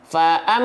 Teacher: abjad alfabet selesai Enggak usah bingung-bingung Ya am berarti ditahan faam pakai huruf M amnya ditahan dua harakat gunah Fa am baru masuk ke vokal a-nya ah perhatikan di sini